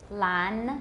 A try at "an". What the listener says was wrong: No. You're having trouble. You're putting a velar there. You're saying long. You're saying un dian. You're saying ang zang da ang, but we want un dian da un. Dear go, so un dian da un. An. 你的舌尖有没有顶到? An, 有没有? 刚刚就没有, 好?